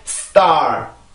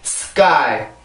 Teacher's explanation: S 다음에 나오는 세 가지 폐쇄음들은 특히 무성음 폐쇄음 세 개는 항상 소리가 된 소리로 바뀌게 돼요. 무슨 얘기냐면 SP, ST, SK 이 세 가지 발음이 요렇게 형식으로 오게 되면 요 원래 소리를 잃어버리고 된소리 현식으로 바뀌게 됩니다.